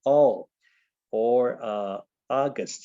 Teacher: That's the open O, and we can find that in certain words, for example, all, or August